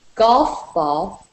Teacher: So even though both words are nouns, and nouns are always stressed, the first word carries a little more. So since golf ball is a compound noun, we consider it as a single noun, and so it has a single main stress on the first word